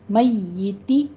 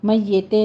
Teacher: کسرہ کی آوازیں آپ نے باریک رکھنی ہیں، شارپ رکھنی ہیں، اس کی آواز مجہول نہیں ہونی چاہیے